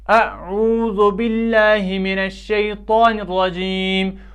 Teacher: لفظ اللہ کا لام جو ہے اس کو ہم نے باریک پڑھا کیونکہ اس سے پہلے زیر ہے۔ اسی طرح جو ہم نے شیطا ہے، طا جو ہے یہ پر حروف میں سے ہے، جو حروف تہجی میں پر حروف آتے ہیں ان میں طا ہے، اس کو ہم پر پڑھیں گے، اور اسی طرح را کو بھی ہم پر پڑھیں گے۔